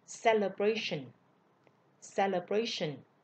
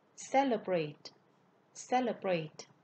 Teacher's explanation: Ở danh từ thì celebration. Nhấn ngữ điệu nhấn ở vần 3. Nhưng mà động từ thì ngữ điệu sẽ nhấn ở vần 1.